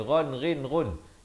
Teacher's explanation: ghain di hujung kerongkong ni